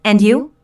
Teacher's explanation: Notice the rising intonation on and you?